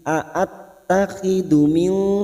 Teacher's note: nun sukun bertemu dal, ikhfa hakiki. Ini juga yang disebut dengan ikhfa aqrab.